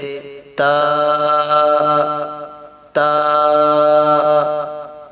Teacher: زبان کی نوک جب اوپر یعنی سامنے والے دونوں دانتوں کی جڑ سے لگے تو اس سے تا ادا ہوتا ہے